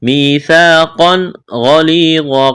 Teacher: قاف کو موٹا کرنا ہے، تنوین کے بعد حروف حلقی میں سے غین ہے تو یہاں پر اظہار کا قاعدہ جاری ہوگا، غنہ نہیں کریں گے۔